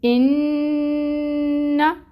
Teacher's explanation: نون مشدد اور میم مشدد ہم نے پڑھا تھا کہ غنہ ہوتا ہے، یہاں پہ غنہ ہوگا 2 کاؤنٹس کے برابر